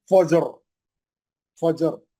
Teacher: जिम पे जो है खलखला करेंगे, रा को मोटा पड़ेंगे